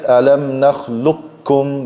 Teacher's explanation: I take the qaf, I merge it into the kaf, I get alam nakhluqkum. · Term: merging close letters